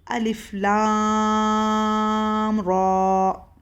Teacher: अलिफ लाम रॉ, रॉ पे सिर्फ खड़ा ज़बर है तो हम 2 हरकत खींचेंगे और लाम के ऊपर मद है पूरा तो हम लाम को 6 हरकत खींचेंगे और ये लाम बारीक पढ़ा जाएगा